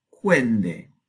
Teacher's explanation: la N se hace dental ante consonante dental. Entonces empezamos con una nasal bilabial, los dos labios, se pierde la I y ahora está delante de D. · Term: asimilación